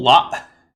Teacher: it has a glottal stop at the end it's not La